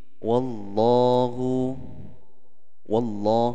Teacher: Lafaz Allah itu sebelumnya kan ada fathah, berarti disebut dengan tafkhim ya, tebal ya, karena sebelum Allah itu di situ ada fathah.